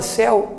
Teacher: o som sai todo pela boca ó céu não existe a passagem do ar pelo nariz e